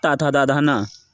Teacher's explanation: ता वर्ग अर्थात ता था दा धा ना, ये दंत अक्षर से बोले जाते हैं